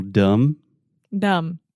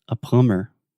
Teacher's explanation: especially when we have a word that ends with the two consonants m b the B is silent